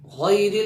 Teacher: را کو پر نہیں کریں گے، باریک کر کے پڑھیں گے